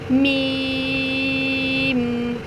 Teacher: میم پہ دونوں ہونٹوں کو ملا لیں گے